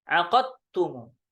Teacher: Kalau riwayah Syu'bah maka qafnya syiddahnya dihilangkan, ditakhfifkan, diringankan jadinya.